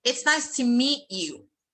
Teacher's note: I stressed meet, and that is the verb.